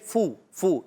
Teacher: فا پر پیش ہے فو، فو، یہ فا ہے. فو اوپر والے دانتوں کے کنارے، نیچے والے ہونٹ کے طرف سے لگیں گے تو ادا ہوتا ہے فا